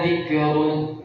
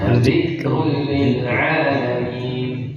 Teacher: bukan qalqalah, bukan pantul, tapi bunyi hams dan bunyi angin. Dzikrun, efek anginnya Dzikrul lil alamin. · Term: sifat hams